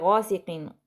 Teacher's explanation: غین کو لمبا کریں گے الف مدہ کی وجہ سے